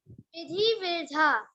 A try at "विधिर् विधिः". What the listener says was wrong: हाँ, तो ये विधिर विधा नहीं है, विधिर विधि।